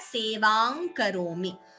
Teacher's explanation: you could combine the anuswara with the ka and chant it as sevang karomi.